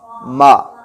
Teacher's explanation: میم ہمارے ہونٹوں کے خشک حصے سے پڑھا جاتا ہے، مطلب جب ہم ہونٹ بند کر کے بیٹھے ہوتے ہیں، منہ بند کر کے بیٹھے ہوتے ہیں، جو حصہ ہونٹوں کا ہمیں نظر آ رہا ہوتا ہے اس کو خشک حصہ کہتے ہیں۔